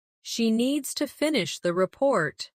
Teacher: Stress needs and report and let the small words fall quietly. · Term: rhythm and stress